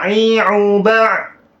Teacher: huruf Ain itu berada di wasatul halq artinya di tengah